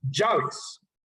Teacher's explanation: Nosotros en el Valle del Cauca decimos llaves, como si fuese con Y, pero ese es el yeísmo.